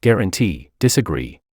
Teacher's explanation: Words that end with ee have their stress on the last syllable, that is, on ee.